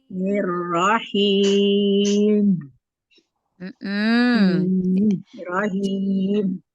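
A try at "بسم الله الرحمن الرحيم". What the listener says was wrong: Jangan dinaber, jangan dinaikkan. Nirrohim. Ya, jadi kasih aliran sedikit biar nggak hilang huruf mim. Nah, ini kita udah mulai belajar nih huruf mim dengan nun, walaupun dia sukun, walaupun dia sukun yang sukun idhar ya, itu dia tetap ada aliran bainiyah.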